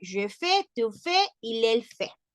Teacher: Porque a pesar de que se escriben diferente, sabemos que la S y la T no tienen pronunciación al final de la palabra. Por lo tanto, los tres se pronuncian igual.